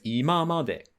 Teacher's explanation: that as a set phrase has a different pitch accent pattern where the ima part is pronounced heiban, and then it drops after the ma